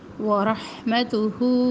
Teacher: ہا گلے کے درمیان سے وسط حلق سے اور ہا اقصی حلق سے، یعنی سینے کے دور کے حصے سے.